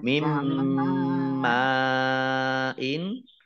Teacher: nun sukun bertemu dengan huruf mim, idgham bi gunah, idgham masuk bi dengan gunah mendengung. Yaitu mendengung mim, ditandai mimnya ada tasdidnya, dibaca double dan ditahan, mendengung ditahan 2 harokat.